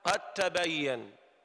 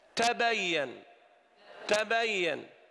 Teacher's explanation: الدال والتاء والطاء لو تذكرون كانوا جميعا من مخرج واحد، ولكن التاء همس والدال جهر